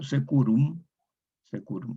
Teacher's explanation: Una E larga corresponde en latín vulgar a E cerrada, romance español queda E.